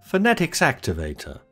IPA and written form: fə.ˈne.tɪks ˈæk.tɪ.veɪ.tə (phonetics activator)